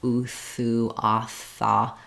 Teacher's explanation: the restriction of air happens between the teeth and the tongue.